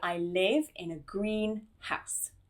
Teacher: And not only that, you want nice spacing between the two words so that they each have their own stress and emphasis within the sentence